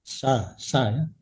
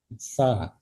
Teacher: ujung gigi ditempelkan ke ujung lidah, dan bacaannya lembut